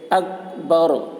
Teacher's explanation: کاف کے اوپر جزم ہے، جزم والے حرف کو پہلے والے حرف سے ملا کر پڑھیں گے. با کے اوپر زبر ہے، زبر کو جلدی پڑھیں، تھوڑا بھی نہ کھینچے